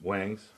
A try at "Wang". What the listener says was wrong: But, now, it's, but it's spelled W-A-N-G, but it's Wong. You actually say it Wong. But if you say it Wong, then you're not saying it right.